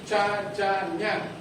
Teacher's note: Huruf langit-langit palatal, ca, ja, nya